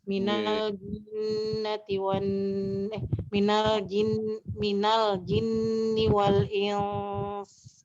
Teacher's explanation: bunyi nun mati disamarkan menuju makhrajnya huruf sin. Sesudahnya disertai tempo dengung atau gunnah 2 harokat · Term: ikhfa